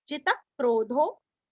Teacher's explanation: जी रस्व त के ऊपर आघात